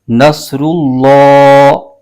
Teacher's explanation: صاد حروف مستعلیہ کا حرف ہے، اس کو پر کر کے پڑھنا ہے